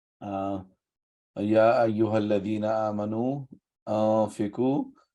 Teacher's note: we round the sound of noon and we don't pronounce the noon. It's the slight nasal sound. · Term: idgham